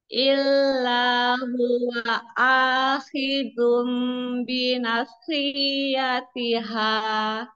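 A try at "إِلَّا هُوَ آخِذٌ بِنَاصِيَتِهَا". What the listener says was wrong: yang panjang nanya bukan sinya ya bina fiatiha ditebalkan itu kan pangkal lidah naik gitu.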